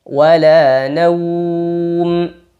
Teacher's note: Ingat, pada pengucapan wawlin salah satu kesalahannya adalah mengarah ke bunyi o, bukan wala naum, tapi wala naum. Sambil monyong, vokalnya u. Wala naum. Ini dihukumi dengan mad lin.